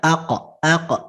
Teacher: ada huruf-huruf Qalqalah yang dibacanya mantul